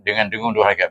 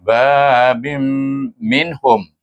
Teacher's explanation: Dan dia ada tasyrik. Jadi kita baca babim dengan dengung dua harakat